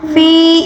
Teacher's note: یہاں پر یا مدہ ہے، اس کو بھی ایک الف کے برابر کھینچ کر پڑھیں گے